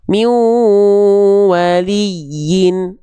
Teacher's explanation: kalau tasydid pada huruf ya itu bukan ditahan, tapi cukup ditekan. Huruf yang dalam kondisi bertasydid yang ditahan hanya apabila nun dan mim saja.